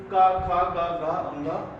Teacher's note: इनका सभी का उच्चारण स्थान हमारा किससे होता है कंठ से कंठ मतलब यहां से यहां से उच्चारण स्थान इसका मतलब होता